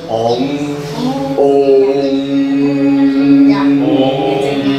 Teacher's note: 所以嗡本身喉是震动的 。嗡，嗡，对，在那里震动。哦，鼻子也会了哈。对对对。那这个气到这里震动，那你的头就轻了。头脑就清明了。那常常练喽。对对，就是时常练，用大明咒。那舌头要剪上去吗？没有没有，发音舌头在发音。不用剪上去，顶上面。没有没有。没有啊，因为发音都